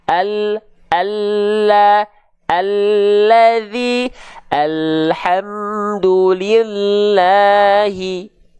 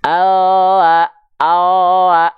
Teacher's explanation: huruf lam itu dilafalkan dari pinggir lidah kita bagian depan yang kiri, pinggir lidah depan kita bagian yang kanan. Keduanya nih, kiri kanan, pinggir lidah depannya, kiri kanannya menyusur sampai ke ujung lidah, disentuhkan ke langit-langit, straight. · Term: lam hijaiyah